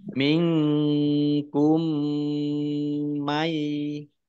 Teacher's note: Nun sukun bertemu dengan huruf kaf, bacaan ikhfa, dibaca samar-samar